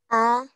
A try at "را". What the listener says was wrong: را وليس آ. ألف.